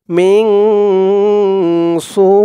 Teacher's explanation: সু, 4 আলিফ টান হবে, মধ্যে মুত্তাসিল। সু বলে 4 আলিফ টান দিয়ে এই হামজাকে ধরবে। হামজার নিচে 2 জের তানবিন, এটা সাকিন হয়ে যাবে এখানে থামার কারণে।